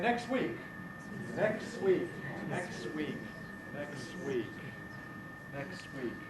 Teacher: We leave the T out. W counts as a consonant.